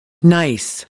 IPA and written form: naɪs (nice)